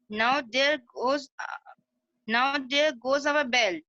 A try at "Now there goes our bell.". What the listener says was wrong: Now के बाद रुकना था. Now there goes our bell. Now के बाद pause होगा. Now there goes our bell.